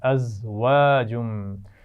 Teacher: ازواجم, اس میں خیال رکھیے زا ہے, اس کو سیٹی سے پڑھیں گے. واؤ کے مخرج کا خیال رکھنا ہے, اس کو دانتوں سے نہیں بلکہ ہونٹوں کو گول کرتے ہوئے ادا کرنا ہے. ازواجم, اور جیم پر تنوین ہے اور اس کے بعد میم آ گیا ہے, تو ہم ملا کر بھی پڑھیں گے اور غنہ بھی کریں گے.